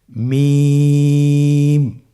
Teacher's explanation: মিম হরফটি উচ্চারণের ক্ষেত্রে অবশ্যই বারিক হবে, পাতলা হবে এবং 3 আলিফ টেনে উচ্চারণ করতে হবে।